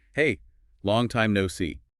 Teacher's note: said quickly, casually with a friendly tone and maybe this slight upward inflection at the end